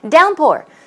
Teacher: Downpour, stress goes on the first syllable.